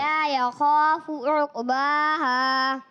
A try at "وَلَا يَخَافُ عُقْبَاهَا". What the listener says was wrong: عقباها میں قاف کو کلیئر کرنا ہے، ولا یخاف، پھر دوبارہ پڑھیں۔ ماشاءاللہ، کلکلے کی آواز کلیئر آنی چاہیے، اوقو ولا یخاف عقباها،